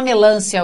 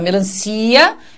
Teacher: não é o som do lã que se Estendeu porque não é melância é melancia